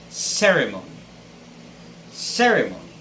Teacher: pronounce the word with the stress on the first syllable